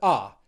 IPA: ʌ